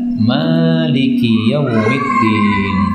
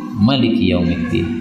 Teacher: Maksudnya ma-nya panjang, tidak pendek seperti riwayat yang sebelumnya tadi